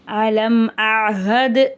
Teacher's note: 60th ஆயத், அலம் அஹது இலைக்கும் யா பனி ஆதம அல்லா தஅபுது ஷைத்தான் இன்னஹு லக்கும் அதுவும் முபீன். அலம் அஹது, இந்த இடத்துல தால் மேலே சுக்குன் இருக்கு, சுக்குன் பெற்ற தால் கல்கலாவுடைய எழுத்து, அசைச்சி ஓதணும்.